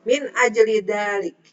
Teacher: min nun mati menghadapi hamzah itu dibaca jelas idhar ajli. Nah, ini ada huruf salah satu qalqalah ya.